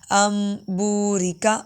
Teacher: یہاں پر نون کی آواز نہیں آئے گی، میم کہے گی